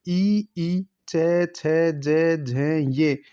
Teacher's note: तो ज जो वर्ण है वो तालु वर्ण कहलाता है। ई, च, छ, ज, झ, ये तालु वर्ण होते हैं